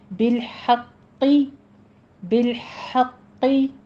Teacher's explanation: count کریں گے، بالحق، ہا وسط حلق سے ادا کریں گے، قوف کے اوپر تشدید ادا کرتے ہوئے قوف کو پر بھی پڑھنا ہے ، اور پھر نیچے کسرہ ہے، آواز باریک کر دیجیے، حق